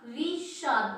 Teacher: स दंत्य वर्ण है, तो इस दंत्य का हम मूर्धन्य कर देंगे